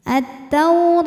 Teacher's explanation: karena ada wau sukun didahului harakat fathah maka dibacanya lembut attaur huruf ro dibunyikan secara tafkhim karena berharakat di atas maka · Huruf ra dibunyikan secara tafkhim karena berharokat di atas, maka ra tebal. Kemudian pada ra juga ada madnya yaitu mad tabi'i muqaddar. · Kemudian hukum alif lamnya adalah alif lam syamsiyah karena alif lam menghadapi huruf syamsiyah yaitu huruf ta, maka alif lam tidak kita baca. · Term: harfulin, ro tebal